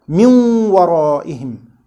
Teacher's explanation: the noon retained one of its characteristics, that is ghunna, while it was merged into the next letter